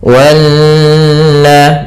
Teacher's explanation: Di sini ada bacaan namanya gunnah, yaitu nun yang bertasydid. Cara membacanya menahankan dulu sepanjang 2 harokat sampai 3 harokat. Wanna, baru dilepaskan.